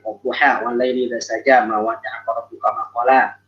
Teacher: Kita mesti fathahnya fathah yang sempurna, ya, fathah yang asalnya yaitu dengan bunyi a, ya, bukan dengan bunyi o atau bunyi e, ya, atau imalah sukro tuh e, kalau imalah kubro e, ya, nggak boleh.